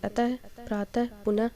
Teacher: अह। विसर्ग का उच्चारण हल्के ह के समान होता है